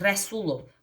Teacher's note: Vurğu rəsulda sula düşəcək, ovaya düşməyəcək.